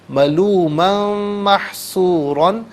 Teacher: ملومن محصورا، ملومن میں میم پر 2 زبر کی تنوین، اسے محصورہ کے میم کے ساتھ ملائیں گے، میم کی آواز کو غننے کے ساتھ ادا کیا جائے گا